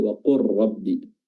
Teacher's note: Contohnya wa qur rabbi ya, qul artinya qul rabb, asal katanya qul rabbi, namun lamnya didghamkan ke ra jadi wa qur rabbi dan seterusnya.